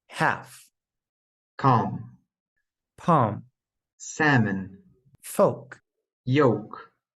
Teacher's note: The L is silent in the following words.